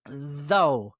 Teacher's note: The TH is voiced. Put your tongue between your teeth and let it vibrate.